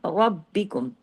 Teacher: Heavy इसलिए कि ज़बर के साथ है। बा बारीक वर्ड है लेकिन डबल है।